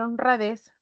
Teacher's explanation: al pronunciar honradez, recae en esta sílaba que es la última, ¿no? A esta sílaba la vamos a conocer como sílaba tónica. · las que tienen menor fuerza de voz al pronunciarla Serán las sílabas átonas on y ra